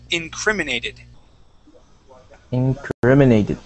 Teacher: So our accent is right here on cri, on incriminated.